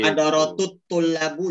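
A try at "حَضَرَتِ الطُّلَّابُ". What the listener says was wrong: jangan hadaratu, hadarati. Kenapa perlu kasroh? Karena iltiqa'us sakinain. bertemunya dua huruf yang sama-sama sukun. Hadarat sukun, alif lamnya sukun. Kalau ada dua sukun berjumpa dalam arisan, maka yang satu, yang pertama dikasrohkan saja supaya pertemuan itu bisa harmonis.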